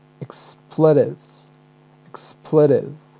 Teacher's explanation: American pronunciation actually the stress falls on the first syllable so it is expletives expletive okay expletive but